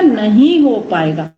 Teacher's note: जैसे मैंने बल दिया, नहीं हो पाएगा। पूरा मैंने वाक्य बोला, बल किस पर दिया? नहीं पर। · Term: बलाघात